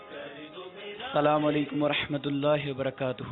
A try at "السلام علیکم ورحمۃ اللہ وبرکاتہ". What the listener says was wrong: دوبارہ کیجئے, واؤ مت کھا جائیے, سنت. واہ کو واضح کیجئے.